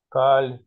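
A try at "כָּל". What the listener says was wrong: Коль, весь, да? Нет, нет, это огласовка камац-кацар, который о. Есть два камаца. В слове коль это камац, который о. Коль.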